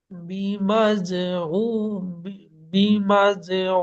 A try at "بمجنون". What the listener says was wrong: বিমাজনুন ও নুন পেশ নুন হবে, উন হবে না। বিমাজনুন, জি।